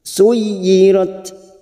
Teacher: Suyi masuk pada huruf ya yang bertasdid tanpa ditekan lama-lama, hanya masuk.